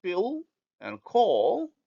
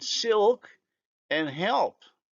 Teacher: the light becomes dark if it is in word final position as in pill and call or followed by a consonant as in silk and help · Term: dark L